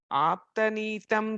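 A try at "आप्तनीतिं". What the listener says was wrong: I think you say Nitam or something, you're saying it's Nitim and the third. Nitim.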